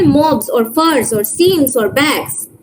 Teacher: All of these words are ending with a voice non-sibilant segment.